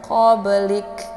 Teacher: cara bacanya dipantulkan ini merupakan pantulan ringan karena ini Qalqalah sugro Jadi qolqolahnya huruf qolqolahnya terdapat di pertengahan kalimat cukup dipantulkan ringan